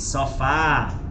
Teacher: Já na palavra, igual a palavra sofá, você não diz sofá, você diz sofá. Então, esse fá, ele é bem forte. Essa é a característica da oxítona. A última sílaba é forte.